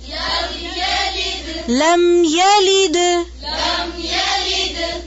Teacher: لام کی زیر کو باریک کریں